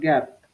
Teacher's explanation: these consonant sounds are produced when the back of the tongue touches the soft palate